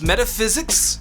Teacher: It's metaphysics. Phys is the stressed syllable.